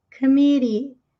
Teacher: T entre vogais, entre sons de vogais, costuma pronunciar com som de R fraco.